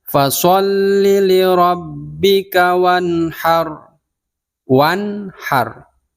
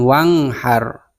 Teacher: nun sukun bertemu dengan ha, ha itu adalah huruf halaq. Jadi dibacanya jelas, dalam tajwid disebut idhar halqi.